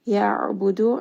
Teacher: Ka is a 2 count mad. Ya'budu, ayn is going to have tawassut. It is again going to be from the middle of the throat.